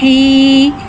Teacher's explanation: या मद्दा को एक अलिफ यानी 2 हरकत के बराबर खींच के पढ़ेंगे